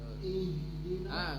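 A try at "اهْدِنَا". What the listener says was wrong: Enggak usah tebal-tebal. I-nya gini ya, I. Terus H itu dia tebal tapi lembut. Ngalir dia.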